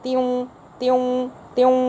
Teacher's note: تا زیر ایک زیر میں بدل جائے گا، واو پہ غنہ سا آ جائے گا